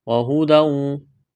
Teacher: تنوین کے بعد واو ہے، ادغام کریں گے، غنہ کریں گے